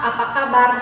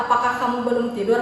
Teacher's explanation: Dalam bahasa lisan, intonasinya naik di akhir kalimat menandakan bahwa pembicara mengharapkan jawaban tersebut.